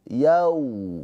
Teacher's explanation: Bacanya itu dilembutkan atau dilunakkan ke huruf wau yau gitu ya. Tapi jangan dibaca panjang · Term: harfulin